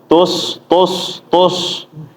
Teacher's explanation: Huruf sin keadaannya kalau mati tajam ya, Bapak-bapak. Jangan menebal. Terutama kalau misalnya sebelumnya U tus tus tus.